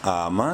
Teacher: یا ایوہ الذین، حمزہ کھڑی زبر آ، ایک الف کے برابر لمبا کریں گے، حمزہ کو کھڑی زبر کی وجہ سے